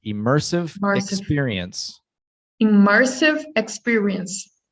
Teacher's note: the stressed syllable is the second